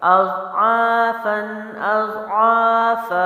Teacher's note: فا دو زبر فن اضعافن اضعافا دونوں کو ایک مد کر دیا کیونکہ الف مد آلریڈی تھا اور فا جو ہے تنوین کو ہم نے وقف میں ایک الف مد کر دیا